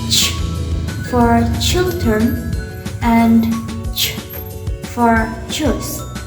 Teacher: It is a stop sound followed by fricatives. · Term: affricatives